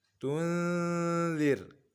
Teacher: A'anzartahum am lam tun, Kemudian huruf nun sukun berjumpa dengan zal sama dengan sebelumnya. Kita dengungkan, kita arahkan nun sukun kepada huruf zal.